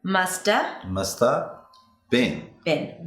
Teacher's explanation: The word 'have' is usually reduced when it's unstressed to 'a'. Which is the 'shwa'. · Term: schwa